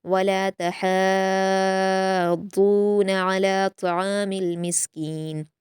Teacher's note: तहाद्दून में आप ता और हा को बारीक पढ़ेंगे, सिर्फ दौद को पुर पढ़ना है और यहाँ मद्दे लाजिम है तो इसको हम छः हरकत के बराबर खींचेंगे।